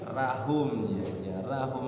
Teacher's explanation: Rahum rohnya hukum tafkhim, jangan tarkik.